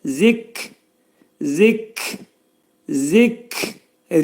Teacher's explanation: Kəf hərfinin məxrəci dilin sonu və dilçəyin axırındadır.